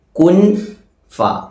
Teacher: നൂനിന്റെ മഖ്റജിൽ നാവ് തൊടാതെ കുൻ എന്ന് പറയാതെ ക്വ ഫ എന്ന് പറയുന്നു. അഥവാ മറച്ചു വെക്കുക. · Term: ഇഖ്ഫാ